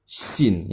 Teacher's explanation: Termasuk dalam huruf alisan, yaitu terbentuknya huruf dengan cara tengah lidah tidak menempelkan pada langit-langit sehingga makhrajnya tidak tertutup